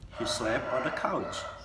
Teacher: There was a T in there, but you didn't sound it.